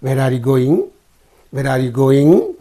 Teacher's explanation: the voice is falling down the pitch is falling down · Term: falling intonation